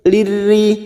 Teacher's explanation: Lirrijali masuk ke huruf ra yang bertasdid. Lirri, ra-nya kita baca tarkik atau tipis karena berharokat kasroh